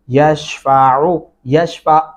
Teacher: عین گلے سے ادائیگی کریں گے